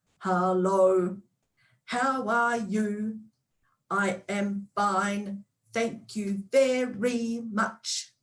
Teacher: what i'm doing is i'm emphasizing each of the syllables as i go